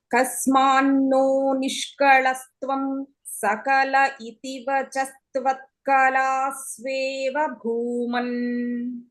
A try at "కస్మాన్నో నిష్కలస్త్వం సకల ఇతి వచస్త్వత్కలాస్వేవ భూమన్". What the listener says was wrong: అయితే ఇక్కడ ఈ తెలుగులో ఉండే లా అని 2-3 చోట్ల మీరు ఉపయోగిస్తున్నారు, పర్వాలేదు. అంటే సంస్కృతంలో ఆ లా అనేటువంటి ఉచ్చారణ సహజంగా లేదు ఈ సందర్భాల్లోనూ వాటిలోనూ.